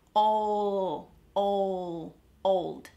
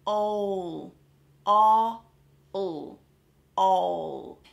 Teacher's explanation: The tip of my tongue is resting on that little ridge behind my teeth, okay? As I'm closing my mouth, my lips are finishing the sound.